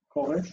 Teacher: it's two syllables. First is ko, open. Second is resh, unaccented and closed.